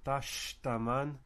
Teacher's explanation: And I'm going to have to go listen to some recordings and try and find this pattern other places, but this is how I learned it, and it seems like there's a general trend that when you have sh, the sh just kind of results in a lengthened vowel of some sort, tashtaman, and the sh just the whole syllable gets pronounced as sh, and if there's a stress to fall on it, it gets knocked to the previous syllable, tashtaman.